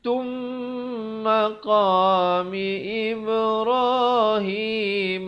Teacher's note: Tapi bila datang mim terus masuk jadi tum dengan dengungkan 2 harakat.